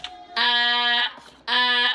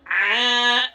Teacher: Kalau hamzah titik startnya dari tenggorokan paling bawah, kalau ain tinggal titik startnya dari tengah tenggorokan. Tapi suara ujungnya antara ain dan hamzah itu sama.